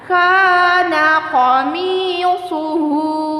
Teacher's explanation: Hu doma tegak, kita panjangkan 2 harokat ya